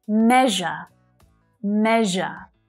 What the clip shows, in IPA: 'meʒə